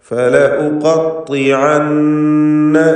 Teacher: ഉഖത്തിഅന്ന ഐൻ മഖ്റജിൽ നിന്ന് ഉച്ചരിക്കാൻ ശ്രദ്ധിക്കേണ്ടതാണ്. ഐന് ശേഷം നൂനുണ്ട്, മുഷദ്ദദത്തായ നൂൻ, അതിനെ മണിക്കണം